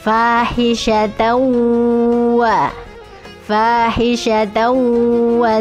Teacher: Ada tanwin bertemu dengan wawu, maka dimasukkan dulu idgham bigunnah.